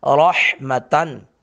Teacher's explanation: تا پر تنوین ہے، را کو پر کر کے پڑھیں گے، حا کو حلق سے ادا کریں